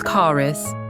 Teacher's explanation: It's car is. The R sound moves from the end of the first word to the beginning of the second. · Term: linking R